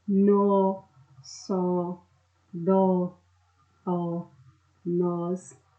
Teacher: nós temos aqui monossílabos tônicos, ou seja, que tem uma intensidade maior ao ser pronunciado